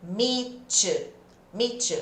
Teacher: meet com you vai dar esse som de tsh